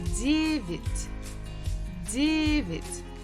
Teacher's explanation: Stress falls on first syllable.